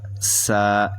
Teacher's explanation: یہ سختی سے یعنی سیٹی کی آواز نکلے گی